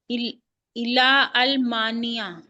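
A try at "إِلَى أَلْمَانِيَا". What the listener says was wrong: बिल्कुल भी मिलाना नहीं, इस हमजा को पढ़ना है। ये देखें, ये अलिफ है ना, ये वाला। तो यहाँ पे आपने इलल मानिया पढ़ना है, इस अलिफ को नहीं पढ़ना, लाम से मिला देना है।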